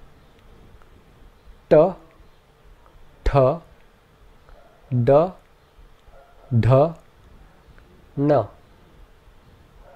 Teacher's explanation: The next group are called cerebrals, where the tongue seals the breath behind it by arching up firmly against the roof of the mouth. The cerebrals have a very hard and sharp sound, and they are all represented by letters with a dot beneath them.